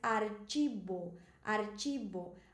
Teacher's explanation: Lembra que no espanhol essa ch se pronúncia como se fosse tch do português e que essa v se pronuncia como b